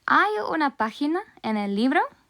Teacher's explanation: it is super important to note that it should be pronounced with a rising intonation, just like we do in English